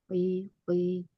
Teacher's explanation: kasrah biasa saja, tapi dia tetap tebal